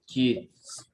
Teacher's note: Ada S, jadi bacanya kids, pakai Z dia.